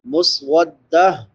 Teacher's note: یہ جو تا ہے جب اس پہ وقف کرتے ہیں تو یہ ہا میں بدل جاتی ہے، اس کو پھر ہا پڑھتے ہیں، مسودت نہیں پڑھیں گے، مسودہ پڑھیں گے.